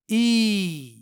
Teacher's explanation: यहाँ ये या हरफ मद है क्योंकि यहाँ जेर के बाद या साकिन है, यानी यहाँ या को खींच कर पढ़ना है, यानी या की आवाज को 2 हरकत के बराबर लंबी करके पढ़नी है इस तरह ई।